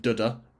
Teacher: rhythm throughout the play of duda so pairs of syllables with the first one is unstressed the second one is stressed which resembles a heartbeat so here we have this sense the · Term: iambic pentameter